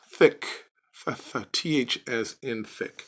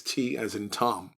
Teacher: back in the ancient biblical days however it was pronounced as in thick th as in thick but today in modern hebrew it is t as in tom